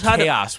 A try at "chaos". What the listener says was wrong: It's there's an os at the end. Two syllables.